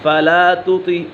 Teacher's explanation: طا پر ہے، حروف مستعلیہ میں سے تو اسی وجہ سے اسے پر پڑھا جائے گا